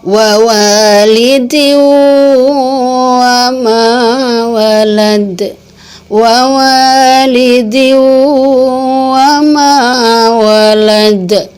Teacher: Jadi seakan-akan wawunya bertasydid.